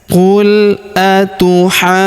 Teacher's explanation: di sini huruf ha kita panjangkan enam harakat ya. Karena pertemuan antara tanda bacaan empat atau lima harakat dengan tanda tasdid di depannya yang ini ya. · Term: 6 harokat